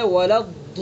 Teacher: زبان کی کروٹ کو ڈاڑوں کی جڑ پر لگا کر کے ادا کریں گے۔ یہ ہے ضاد کا مخرج۔